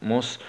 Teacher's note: سين سكون مع الصفير والهمس